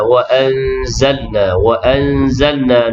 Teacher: nun mati bertemu dengan zai, ikhfa hakiki dengung di situ